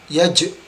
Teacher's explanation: huruf jim tidak berdesis, caranya adalah tidak menghempaskan nafas keluar. Yaj, tapi seperti ditarik ke dalam ya.